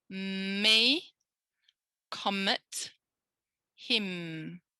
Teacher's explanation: the articulator is being used it's my lips i can feel that there's vibration so it's voiced